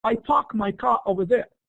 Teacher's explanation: the pronunciation of R sound in uh post vocalic position like in car